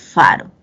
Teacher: se pronuncian cuando el labio inferior sube a los dientes incisivos superiores